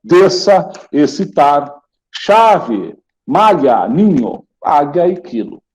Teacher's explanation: você não ouve o som dos dois, o SC. Então, é o som de uma letra só.